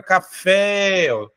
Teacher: está na a última posição como por exemplo a palavra café a sílaba mais forte está no fé última sílaba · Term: oxítona